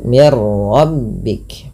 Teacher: Tadi tidak dibaca lagi min rabbik tapi dibaca dengan mirbik dengan memasukkan bunyi nun kepada huruf ro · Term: idgham bila ghunah